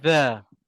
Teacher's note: Lidah terkeluar. Hujung lidah keluar dan terkena hujung gigi atas. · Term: huruf za